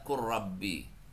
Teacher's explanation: lamnya enggak dibaca lagi kok. Langsung baca qurbi. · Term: diidghamkan